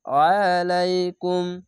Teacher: আইনটিকে মোটা করে গলা চিপে পড়বেন